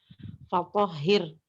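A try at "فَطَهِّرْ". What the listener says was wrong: Tipis satu, fatohir. Itu netral itu. Tipisin. Masih netral. Ya, itu wajib disebutkan takrirnya. Takrirnya masih belum satu getaran lembut.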